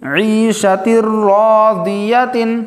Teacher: اس مثال میں بھی تنوین کے بعد حروف یرملون میں سے را آیا ہے، را آنے کی وجہ سے غنہ کے بغیر پڑھیں گے